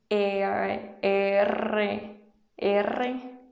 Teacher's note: No se hace con la lengua tocando el paladar, sino que viene desde la garganta. Es un sonido gutural.